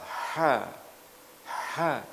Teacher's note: Makhrajnya adalah di tengah tenggorokan. Adapun sifat yang pertama hamas, yaitu pada waktu kita melafalkan ada nafas yang terlepas. Ha tidak boleh ditahan.